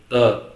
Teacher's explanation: आपका जो जीभ है दांत को टच करेगा, इसलिए इसको बोलते हैं दंत्य